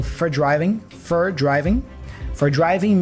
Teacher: for is often reduced to fur